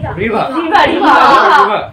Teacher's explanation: লাস্টে কোনো ওয়ার্ডের শেষে যদি আর থাকে, সে আর এর উচ্চারণটা, প্রোনাউন্সিয়েশনটা হয় না, উচ্চারণটা হবে রিভার, আর এর উচ্চারণটা হবে হবে না।